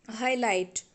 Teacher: we have to give stress on original word or root word that is high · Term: word stress